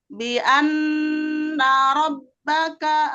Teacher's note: Di situ ada nun tasydid, gunnah musyaddadah, ditahan dengungnya 3 harokat di rongga hidung merupakan tingkat gunnah pertama gunnah akmal. Tahan dulu 3 harokat.